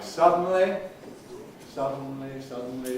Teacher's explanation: We've studied syllabic consonants in words like suddenly, suddenly, suddenly, three syllables, but one of those syllables is carried not by an ordinary vowel, but by a syllabic consonant